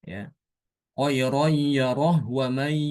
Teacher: karena kalau wakaf harus sukun Nah untuk membedakannya harus diwasalkan ya kalau diwasalkan ini Imam Hisyam hanya dibaca sukun sama seperti waqaf